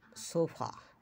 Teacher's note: for sofa, the last A is a schwa